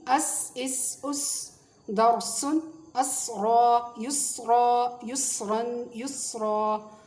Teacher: سین کی آواز باریک اور سیٹی والی ہوتی ہے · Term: حروف صفیریہ